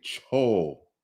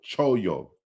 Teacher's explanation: the liquid sound has been lost right so this is why you have this this long o here